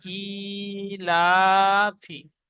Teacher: লামের উপরে খাড়া জাবার এসেছে, খাড়া জাবার আলিফ মাদ্দার সমতুল্য, সুতরাং খাড়া জাবারকে আলিফ মাদ্দার মতো একালিফ পরিমাণ টান দিয়ে পড়তে হয়। হার নিচে জের এসেছে, জেরটি হারাকাত, হারাকাত তাড়াতাড়ি পড়তে হয়, টান দেওয়া নিষেধ।